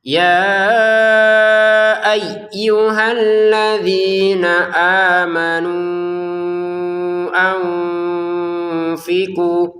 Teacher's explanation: Nah, ya kita panjangkan lima harakat.